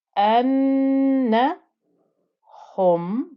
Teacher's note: any noon with shadda or any meme with shadda gets that extra nasal sound of the ghunnah